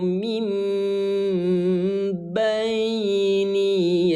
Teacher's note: mengganti suara N menjadi suara M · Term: iqlab